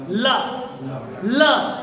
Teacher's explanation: हवा का जो प्रमुख वेग होता है वो जीभ के आसपास या अगल बगल से निकल जाता है, वे पार्श्विक कहलाते हैं। ला, जीभ देखो फोल्ड हो रही है, ला बोलते ही, ला, ला, और हवा देखो निकल रही पार्श्वों से, इसीलिए पार्श्विक।